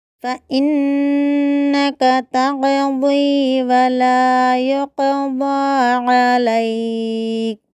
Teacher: فإنک میں حمزہ کو واضح کرنا ہے، نون مشددہ کو گنہ کرنا ہے